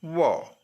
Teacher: जब हम व कहेंगे तो दांत भी और ओष्ठ भी मिलकर व का उच्चारण करेंगे